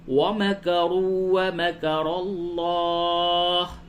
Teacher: را کو پر کیجئے اور لفظ اللہ کے لام کو بھی پر کیجئے